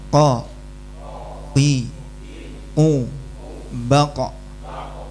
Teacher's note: Pangkal lidah nempel ke langit-langit mulut yang lunak. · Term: qof